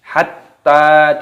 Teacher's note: taknya berharokat tasdid maka ditekan, dimasukkan. Hatta dipanjangkan.